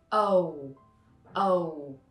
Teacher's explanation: There are many people who pronounce this letter just like the O letter in English, but if you observe carefully, you might see that when you pronounce O in English, your mouth opens big at first and then it's slowly closed. O, O. But with the O in Vietnamese, your mouth remains the same form.